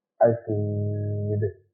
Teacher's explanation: دال پر پیش ہے، دال پر پیش ہے، جب وقت کریں گے تو یہاں آ جائے گا جزم، اور جزم آنے کی وجہ سے اسے قلقلہ کر کے پڑھیں گے، دال قلقلہ کے حروفوں میں سے ہے